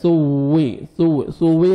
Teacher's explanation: ادا کریں گے تاکہ سین میں ساؤنڈ مکس نہ ہو اور واو مشدد ہے، سختی سے آپ نے واو کے ساتھ آپ نے ملانا ہے ، ثوی ثوی نہیں پڑھنا، ثوی